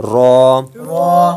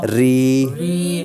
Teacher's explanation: جس را پر زبر ہو اس را کو پر، را کے نیچے زیر ہو تو را کو باریک اور را پر پیش ہو تو را کو پر پڑھنا ہے،